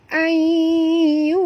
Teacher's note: nun mati bertemu ya, masukkan bunyi nun ke dalam ya disertai dengung, idgham ma'al gunah.